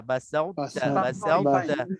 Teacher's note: to tu dah diidghamkan, dah dimasukkan ke dalam ta, tapi dia tak idgham sepenuhnya, dia kena ada muncung tebal to tu.